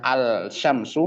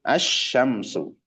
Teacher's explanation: saking kuatnya huruf syin sampai mampu menghilangkan huruf lam yang ada sebelumnya, yaitu yang aslinya alsyamsu menjadi asyamsu. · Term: lam syamsiyah